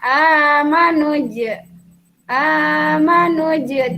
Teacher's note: huruf gamenya Ini berharakat sukun ini ada tanda mati ditengah kalimat maka cara membacanya huruf Jim dibaca memantul tipis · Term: Qolqolah Sugro